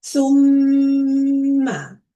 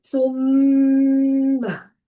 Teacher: Make sure that you stay on the sound of meem for 2 seconds. Okay, hold it in your nose. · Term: ghunna